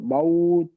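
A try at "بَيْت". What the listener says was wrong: বাউন নয়, জি বাইত, ইয়া আছে।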